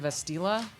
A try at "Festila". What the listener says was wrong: Festila with an F. Festila.